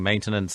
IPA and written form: ˈmeɪntənəns (maintenance)